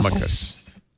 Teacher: the C is hard, but the emphasis is on the first syllable